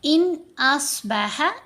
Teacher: نون ساکن کے بعد حمزہ، تو یہاں پر ہم نے اظہار کرنا ہے تو نون کو ظاہر کریں گے. ان ایسے کر کے نہیں پڑھنا.